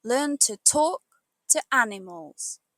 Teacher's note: Try saying it with strong stress on talk and the ani. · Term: great rhythm